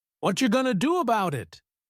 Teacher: What are you becomes whatcha. Going to becomes gonna. About it becomes bout it. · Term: reduced speech